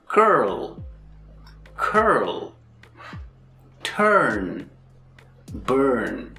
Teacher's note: This is a strong R sound because in each of these words, the R is located in the stressed syllable.